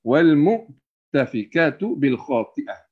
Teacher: Huruf Hamzah, apabila dia tak kira lah dalam keadaan fathah, kasrah, dhammah ataupun dalam keadaan sukun, pastikan jangan bunyi Ain. Walaupun huruf dia tu lebih, lebih macam nak dekat dengan huruf Ain.